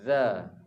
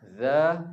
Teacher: Bezanya yang zal tu nipis, yang dha tu tebal.